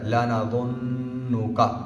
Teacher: کا اینڈ پہ آیا ہے، اس کا کو لمبا نہیں کریں گے، کا ایسے نہیں پڑھیں گے، لانا ظنک، یہ غلط ہے، لانا ظنک، ٹھیک ہے نا، لا نا یہ بھی غلط ہے، لانا، ٹھیک ہے نا، لانا ظنک، ظنک، ظنک۔